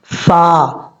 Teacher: اوپر والے جو 2 دانت ہیں ان کا کنارہ نیچے والے ہونٹ کی تری والی جگہ پہ لگے گا تو فا پڑھا جائے گا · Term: فا کا مخرج